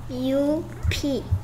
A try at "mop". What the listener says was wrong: MUP가 아니고 MOP예요.